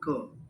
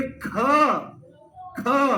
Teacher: तो ख जो होता है वो महाप्राण होता है। और जो क होता है, एक एग्जांपल, एक एक एग्जांपल लेके चल रहे हैं, जो क होता है ये अल्प प्राण होता है।